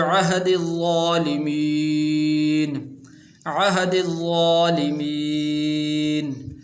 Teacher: عین حمزہ نہیں پڑھنا، عین کو اپنے مخرج سے ادا کرنا ہے. اس کے بعد ہا، ہا سینے سے نکلتی ہے، اس کو اپنے مخرج سے ادا کرنا ہے.